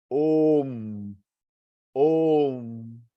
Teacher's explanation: ओ प्लुथ, म हाफ, म हाफ यानी अनुस्वार, करके जो साउंड आता है, आधा म, तो ओ को 3 बार एक्सटेंड करना है